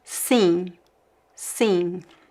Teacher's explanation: Be careful, I don't pronounce the M. Sim, it's not sim, there's no M sound.